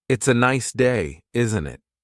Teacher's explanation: The tone going up at the end tells the listener that you're asking a question.